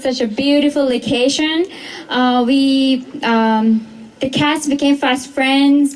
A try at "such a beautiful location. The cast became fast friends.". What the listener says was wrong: You see how she just skipped? It was kind of like she didn't link those.